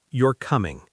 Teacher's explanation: The sentence, you're coming. If I say it flat, you're coming, it sounds like a fact.